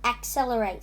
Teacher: four syllable syllables the syllables are at cell la rate accelerate and the stress is on cell accelerate cell excel cell accelerate the stress is on that so